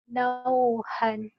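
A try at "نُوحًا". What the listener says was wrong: Nuhan. Bukan nauhan. Nuhan. Kalau nauhan patah.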